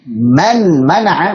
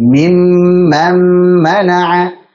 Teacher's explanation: maka nunnya dileburkan ke mim menjadi mimman mana'a. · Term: idgham